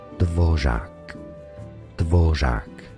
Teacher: This S tier sound is an alveolar, non-sonorant fricative trill. During articulation, the tongue is raised. This complicated sound is often the last one that Czech children learn and is extremely hard for L2 learners to master. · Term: R with a caron